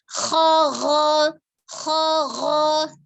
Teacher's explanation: Kalau secara makhraj dia sama, secara dia huruf tebal atau tipis dia sama-sama huruf tebal, maka dia sama-sama isti'la, mengangkat pangkal lidah. Harokatnya fathah sama-sama dibuka ya, kho gho, jadi bukan khogo.